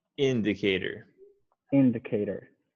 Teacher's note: you want to emphasize the first syllable.